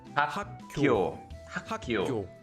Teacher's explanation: Whenever you have a consonant, specifically a base consonant, a double consonant, or a strong consonant, that's followed by a base consonant, the second base consonant will become pronounced like a double consonant